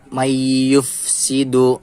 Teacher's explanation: Idgham Bighunnah Kenapa karena huruf nun sukun bertemu huruf yang bertasydid dibacanya masuk dengan dengung dan ditahan sampai 3 harokat